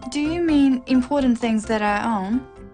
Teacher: it's a yes/no question with a rising tone